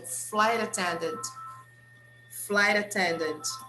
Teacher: we connect flight and attendant, and the T we pronounce with the sound of R